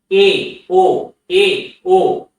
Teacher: জিহ্বা কিন্তু সবচেয়ে উঁচুতে উঠছে না, তার একটু নিচে